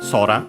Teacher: Accent on the first syllable.